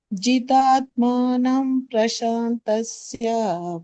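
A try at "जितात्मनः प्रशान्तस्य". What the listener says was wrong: ಯಾಕೆ ಜಿಪುಣಂತನ ನಿಮಗೆ ದೀರ್ಘ ಇರೋದ ದೀರ್ಘ ಹೇಳಬೇಕು ತಾನೆ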